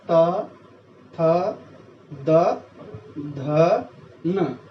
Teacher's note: ये सारे के सारे वर्ण हमारे दांतों से टच हो रहे हैं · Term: दंत्य